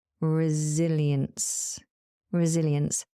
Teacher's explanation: Notice how the S is pronounced as a Z and the C at the end as an S.